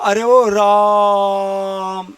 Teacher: अब रा में जो आ है उसको लंबा करके बोला हमने, तो रा में जो आ है वो प्लुत हो गया।